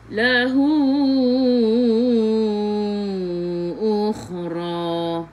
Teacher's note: Masuk ke dalam kha ada sukun. Kha khiku biar ada angin, biar menggelegak.